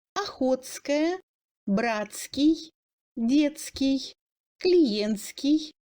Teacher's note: Dans les adjectifs TSK passe en sk.